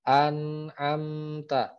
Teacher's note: tetap ada gunahnya gitu kan, tapi tipis. Sedikit banget. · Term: gunah asli